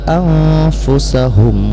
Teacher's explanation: Nun mati bertemu dengan fa, hukum bacaannya ikhfa ya. Jadi disembunyikan suara nun ke dalam fa dan bunyi nun terdengar samar.